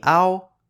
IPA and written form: aw (เ◌า)